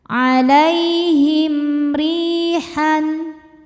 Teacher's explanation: huruf ro dibaca secara tarqik karena harakatnya di bawah yaitu kasrah. Cara bacanya ditipiskan. Ri madnya adalah mad thobi'i zohiri. · Alaihim him ada izhar syafawi karena mim sukun tidak menghadapi mim atau ba. melainkan menghadapi ro. Maka mim sukun dibaca jelas. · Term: idhar syafawi